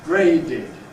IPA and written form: ˈgreɪdɪd (graded)